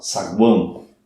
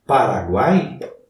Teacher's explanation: Eu uso as narinas, parte do som sai pelas narinas. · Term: tritongo nasal